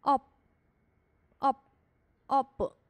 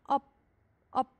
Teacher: 把▁b▁收住啊▁op▁op，▁不能发出来